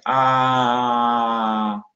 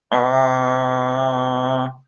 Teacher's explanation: Um A, por exemplo, A na descrição fonética tradicional é uma vogal baixa central, significa que sua boca está aberta.